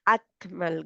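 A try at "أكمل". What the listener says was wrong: अकमल, आप काफ पे हम्स कर रही है ना, अकमल। जी जी जी, दो चीजों पे सिर्फ ओनली हम्स होता है ना।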